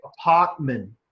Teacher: We don't actually say the R sound in there at all. So the R basically in Australian or UK English is basically gone.